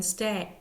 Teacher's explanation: The vowel sound starts with one sound and slides to another sound. As in stay, A starts with a long A and slides to a long I to make an EI. · A starts with a long A and slides to a long I to make an EI. The phonetic symbol is EI. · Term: Diphthong